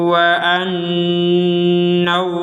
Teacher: Ada nun bertasdid, kita dengungkan.